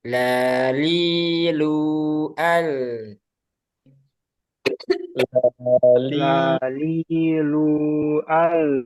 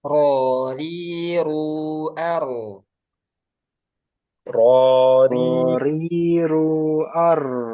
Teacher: Kalau lam dia celahnya ada di samping, kalau ro ada di tengah. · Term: inhiraf